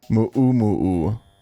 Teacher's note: Moo-oo-moo-oo is how that's pronounced, actually. Because that symbol in the Hawaiian language is a glottal stop. Like if you're an American, the T in Batman.